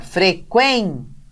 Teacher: a sílaba quen, que é a penúltima dessa palavra, é a tônica.